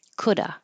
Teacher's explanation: it will be easier to just drop the V and say coulda.